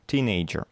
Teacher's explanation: Здесь запомните, что ударение в этом слове на первый слог.